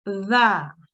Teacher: the tongue is pressed against the edge of the upper teeth and slight air should Escape